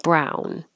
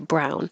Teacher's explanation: You won't really hear the N because you're just holding it there